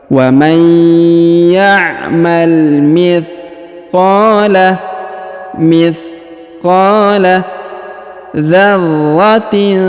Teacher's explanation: Huruf ra ditahan dan ditekan karena terdapat tanda tasdid.